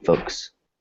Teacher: It's almost like the L is silent.